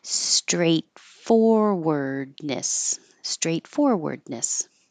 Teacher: Straight, you hold that T. Forward, you hold that D. So you won't hear a T or a D.